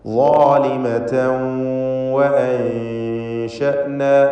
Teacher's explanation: ളാലിമതൻ എന്നതിലെ തൻവീനിന് ശേഷമുള്ള വാവിൽ ലയിപ്പിച്ച് മണിക്കണം. ഇദ്ഗാം ബിഗുന്ന നാഖിസ്.